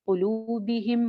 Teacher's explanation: क़ाफ़ मोटा, वाओ एक अलिफ लंबी